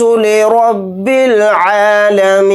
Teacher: یوم یقوم الناس لرب العالمین، یہاں پر نون کے اوپر تشدید ہے تو یہاں پر غنہ کر کے پڑھیں گے، یوم یقوم الناس لرب العالمین۔ یہاں پر را کو موٹا یعنی پر پڑھیں گے کیونکہ را کے اوپر زبر ہے، اور نون کو ساکن بنا کر پڑھیں گے حالت وقف میں۔